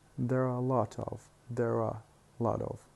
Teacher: we say it with schwa plus re if the following word starts with a vowel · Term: auxiliary